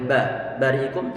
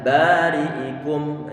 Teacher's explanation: Kemudian sebelumnya fathah, dia juga bacaan matobi, berarti kita gandakan suara vokal a-nya ba, tidak boleh ba, bari'ikum, tapi adalah bari'ikum.